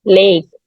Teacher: She's monophthong. not, yeah, she's not gonna glide it to the E